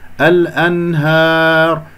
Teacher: الأنهار، هكذا بدون تقليل صوت الألف